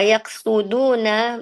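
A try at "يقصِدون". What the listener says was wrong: Bukan yaksudu, yaksi, sodnya kasrah.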